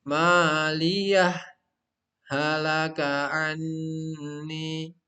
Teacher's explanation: Jadi berhenti sejenak tanpa mengambil nafas dan bukan diidghamkan. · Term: saktah